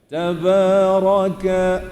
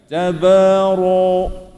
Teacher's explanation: Jadi bila tuan-tuan baca tabara, pangkal lidah kita naik. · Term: tebal